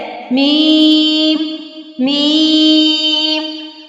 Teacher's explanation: میم کا مخرج ہے ہونٹوں کے خشک حصے سے میم ادا ہوتا ہے۔ میم بولتے ہوئے جو میم کی آواز ہے اس میں ایک رول ہوتا ہے، اس رول کو کہتے ہیں غنہ۔